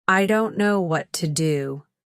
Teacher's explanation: Sadness tone, soft, slow, with longer pauses.